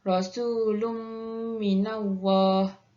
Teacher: Yang ketujuh ialah idgham ma'arunnah. Idgham ma'arunnah ialah berlaku apabila tanwin bertemu dengan huruf mim dan bacaannya perlulah dengan 2 harakat